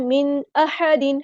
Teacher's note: मिन अहदिन नून साकिन के बाद हम ज़ाहिर करेंगे, इज़हार हो रहा है।